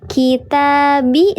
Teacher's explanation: Kitabi sama dengan kitaba sama-sama dibaca panjang dua harakat. Maka namanya sama-sama mad asli atau mad thami'i.